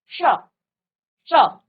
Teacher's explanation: महसूस कर पाएंगे कि आपका मुर्दा स्थान कहां पर है और जहां से आपने ट ठ बोला वहीं से आपका ये वाला स भी निकलेगा